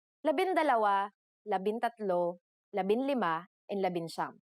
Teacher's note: For the letters D, L, R, S, and T, the G from NG is dropped to make it easier to pronounce.